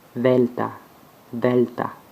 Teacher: comme un V, mais entre les dents. Comme en anglais, that.